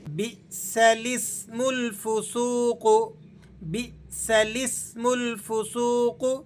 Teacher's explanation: بئس، اس لفظ کو الگ سے پڑھنا ہے، اب یہ الف نہیں پڑھا جائے گا، سائلنٹ ہو جائے گا، اور لام کو سین سے ملا کر پڑھنا ہے۔ لسم، یہ جو زیر ہے اس کا تعلق لام کے ساتھ ہے، اس الف کے ساتھ نہیں ہے۔